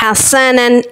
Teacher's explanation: इज़हार का कायदा है बग़ैर गुन्ने के पढ़ेंगे यानी दो ज़बर की तनवीन के बाद हा हुर्फ़े हल्की का है